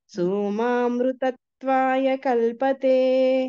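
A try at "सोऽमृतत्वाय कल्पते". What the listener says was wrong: సోమా లేదమ్మా.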